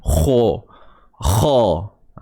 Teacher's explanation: Cuma kalau dari sudut sifatnya pula, macam mana nak tebalkan kha? Kena naik pangkal lidah. Kha, tapi bukan sebahagian besar lidah, pangkal lidah sahaja. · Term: huruf kha tebal